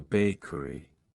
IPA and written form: ˈbeɪkəri (bakery)